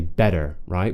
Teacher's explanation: In most American accents, when they connect their speech with a T, they will change it to what we call a flap T